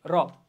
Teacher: যাই হোক, এই জাতীয় ধ্বনিগুলো উচ্চারণের সময় জিভের সামনের অংশ উল্টে গিয়ে উপরের পাটে দাঁতের মূলে একটি মাত্র টোকা দেয়। কি, জিভের সামনের অংশ উল্টে যাবে, একটু ভাঁজ হবে আর কি, উল্টে যাবে এবং উপরে একটু টোকা দিবে, র। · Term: তাড়িত ধ্বনি